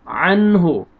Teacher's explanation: نون ساکن کے بعد حروف حلقی میں سے ہا آ رہا ہے تو یہاں پہ آپ نے اظہار کرنا ہے